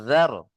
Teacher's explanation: জিবের আগা আর সামনের দাঁতের আগার সাথে লেগে উচ্চারণ হবে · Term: জাল